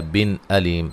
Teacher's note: نون تنوین کا اظہار ہوگا، غنہ نہیں کریں گے